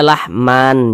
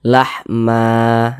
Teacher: dipanjangkan Dua harakat Mad iwad · Jadi dibaca lahma, jangan dibaca lahman, jangan, tapi dibaca lahma, dipanjangkan 2 harokat, mad iwad. Ingat ya, ada alif, sebelumnya ada harokat fathatain.